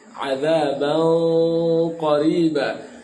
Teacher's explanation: ikhfa'nya ditebalkan ya, tafkhimul gunnah.